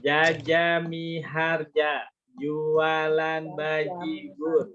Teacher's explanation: Jimnya itu tidak keluar udara.